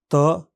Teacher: सामान्य विवरण: त, इस ध्वनि के उच्चारण में फेफड़ों से आने वाली हवा बंद स्वर यंत्रों से होकर आती है और जीभ का सिरा ऊपर के दांतों के पीछे लगातार हवा को रोकता है।